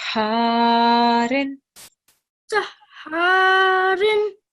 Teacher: we're going to prolong alif sound for 2 seconds and make ha sound 2 times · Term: shadda